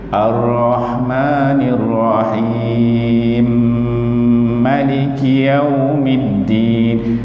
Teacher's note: Dengung pada mim tu mulut kena rapat okey